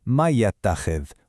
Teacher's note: So, instead of reading them like two totally separate things, man ya'takhidh, we merge them. The n sound flows into the ya, and what you get is may ya'takhidh, with that lovely hum right over the top. It's just so much smoother, so much more melodic.